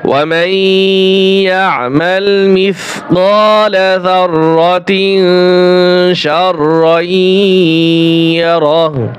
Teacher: এইখানে গুণ্য হবে তানউইনের পরে শিন আসছে ইকফার হরফ